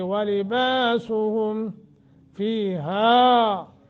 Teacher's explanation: با کے آگے الف ہے تو 1 سیکنڈ کی مد